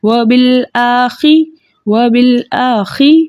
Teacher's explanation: زیر کو بغیر کھینچے بغیر جھٹکا دیے متوسط اور معروف طریقے سے پڑھتے ہیں اور ای کے ساؤنڈ کے ساتھ پڑھتے ہیں